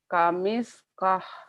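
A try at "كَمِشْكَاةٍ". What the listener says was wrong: Shin. Kamishkah. Jadi panjang ada mad aslinya.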